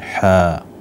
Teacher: الحاء من الحروف المد التي تمد مدا طبيعيا بمقدار حركتين، حاء، والميم حرف لازم أو مد فيه مد لازم حرفي مخفف، يعني أيضا يمد بمقدار ست حركات.